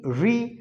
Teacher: री बोलते समय हमारे मूर्धा का उच्चारण होता है, यानी मूर्धा से बोलते हैं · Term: मूर्धन्य वर्ण